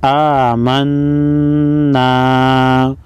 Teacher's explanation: نون مشدد پر غنہ ہوگا۔